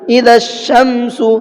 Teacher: اب دیکھیے مثال اس کی، اذا الشمس، اس کے اندر میں نے دال کو ڈائریکٹ شین میں ملایا ہے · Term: حروف شمسی